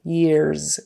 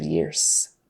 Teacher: there's a vocalic r in front of the last sound and that is voiced and so Years also takes on the z sound instead of s